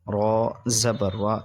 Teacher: را پہ زبر ہو یا پیش ادھر موٹا پڑھتے ہیں تو اس لیے موٹا پڑھیں گے.